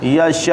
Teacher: آخر میں حمزہ ساکن ہوا کیونکہ آخر میں پیش تھی، تو ساکن ہونے کی وجہ سے حمزہ کو جھٹکا سے ادا کرتے ہیں